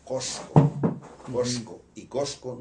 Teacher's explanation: la S se pronunciaba de la misma manera en que se pronuncia hoy día en España, es decir, como una sibilante apical